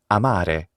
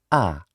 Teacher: It lies on the central axis. It is an open central unrounded vowel.